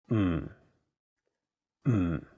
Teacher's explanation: when someone is thinking about a plan and they say hm notice that there is no vowel in the syllable so you have to really stress the M sound · the first character is in a very low tone fourth tone it sounds a bit like when someone is thinking about a